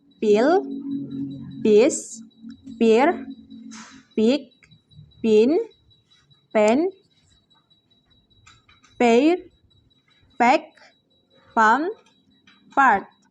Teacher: Voiceless bilabial stop sound pa.